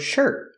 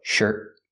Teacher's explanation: T in the word shirt at the end of the word is a stop T.